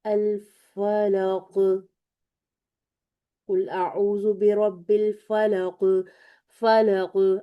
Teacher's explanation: हम बहुत इसको कस के नहीं अदा कर रहे, बल्कि हम थोड़ा सा यहाँ पर ग्रेड में कमी करते हुए सेकंड ग्रेड का कलकला कर रहे हैं